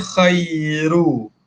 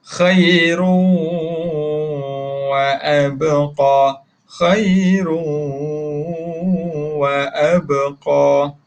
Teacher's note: hilangkan sebutan nun ataupun mim. Khairun jadi khairu.